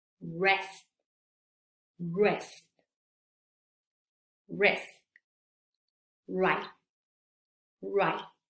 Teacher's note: estas palabras que terminan en T, casi no se escuchó la T del final.